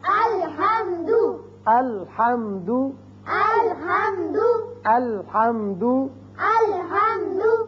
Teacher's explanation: لام ہلے نہیں، ال نہیں کرنا، کیونکہ آپ کو حروف قلقلہ جو بتائیں 5 ان میں سے لام تو نہیں ہے